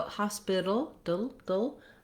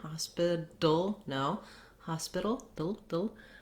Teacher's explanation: You might not see that in the dictionary, but it means that Americans will use, rather than a T sound here, they're going to use something that sounds more like a D sound. It's called a flap.